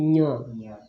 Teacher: We are nasalizing the ja and not nasalizing ga. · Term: nasal with ja